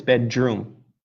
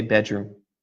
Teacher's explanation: when they are one word the D changes to a J